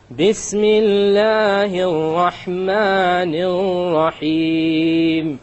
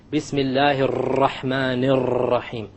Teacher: Notice the 2 R's with the shadda on them in the Rahman. I didn't roll them. Remember we talked about we're not allowed to roll them.